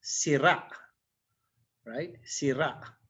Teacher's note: This one is the circumflex, so the accent is in the last syllable with the glottal stop.